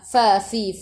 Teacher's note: Fa fi fu gigi atas menyentuh perut bibir bawah.